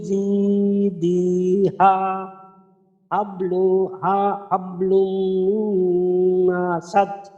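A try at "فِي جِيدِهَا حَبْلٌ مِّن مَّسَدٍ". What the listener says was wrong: আচ্ছা জি, ওই যে মাসাদে টান হয়ে গেল, এখনো জি দিতেও টান হয়েছে, এগুলা থেকে টান, তাহলে টা এবং মাসাদের টানটা দূর করে দিন।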